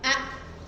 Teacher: kalau ain itu masih ada aliran suaranya A. A jadi enggak langsung putus ya.